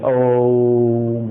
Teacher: ओम का जो आ है उसका उच्चारण करते समय कंठ पर वाइब्रेशन होना चाहिए। आ का उच्चारण कंठ से होता है, तो ओम का ध्वनि यहां से निकलेगी, ओम यहां से जाती हुई यहां पर वाइब्रेशन होगा।